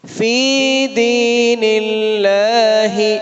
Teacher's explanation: فی اور دی دونوں میں یا ساکن ہے، لمبا کریں گے، یا ساکن زیر کے بعد ہے۔ لفظ اللہ کو یہاں پر باریک پڑھیں گے کیونکہ اس سے پہلے زیر ہے۔